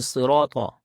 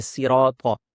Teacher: صاد کو موٹی آواز سے پڑھا جاتا ہے، اور طا بھی یہاں پر موٹی آواز سے ہے